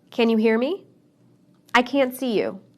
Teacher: I didn't use the T sound in any of those sentences